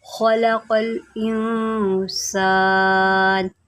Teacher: قاف کو بھی موٹا کریں کیونکہ یہ حروف مستعلیہ میں سے ہے